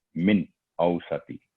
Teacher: نون ساکن کے بعد حمزہ ہے تو یہاں اظہار کا رول اپلائی ہوگا، واضح اور کلیئر آواز صرف 1 سیکنڈ